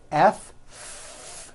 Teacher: the F sound, where you're biting down on your lower lip.